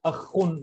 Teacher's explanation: یہاں پہ یہاں ابھی پڑھے تھے ہم. یہ حلق کے ابتدائی حلق سے جو ادا ہوتا ہے خے، اس کی آواز میں کھرکھراہٹ ہوتی ہے